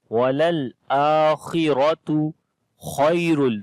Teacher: This kha again we read in heavy sound